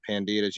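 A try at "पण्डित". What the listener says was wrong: Also, it's called Pandit. You don't pronounce the A. Yeah, Pandit.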